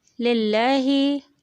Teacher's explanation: اب ترقیق لام. للہ، لام باریک پڑھا گیا کیونکہ اس کے شروع والے حرف میں زیر تھا